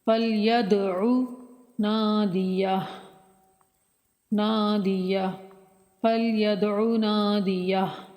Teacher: دال بھی حروف کلکلہ میں سے ہے، ساکن ہے، یہاں پر کلکلہ کریں گے یعنی کہ ہلا کر پڑھیں گے